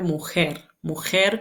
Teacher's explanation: con esa J velar para los hablantes de la península